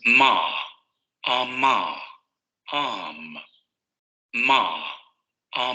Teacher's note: Ok, nasal bilabial sonoro, ya sabemos también aquí lo que va a ocurrir. El aire va a salir por la nariz, los dos labios van a producir ese bloqueo de la cavidad oral y va a haber vibración de cuerdas vocales.